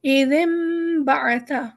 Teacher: نون کو ہم نے میم بنایا کیونکہ فوراً با آ گیا ہے تو ہمارا نون جزم جو ہے میم میں تبدیل ہو گیا. میم چھوٹا سا انہوں نے بنا بھی دیا ہے تاکہ ہماری آسانی ہو جائے.